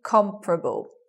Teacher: you anticipate four syllables but you get three comparable with the stress on the first